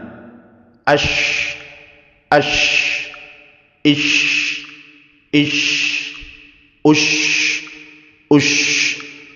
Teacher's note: shin, nanti ada sifat tafashi, mengalir udaranya.